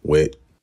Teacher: voiceless dental stop, which is somewhere between t, a t sound, and th, the voiceless th sound. With might become Wit. · you can hear the glottalization of the t sound. It often becomes a glottal stop, just like t does in general American English in certain contexts, like at the end of a word.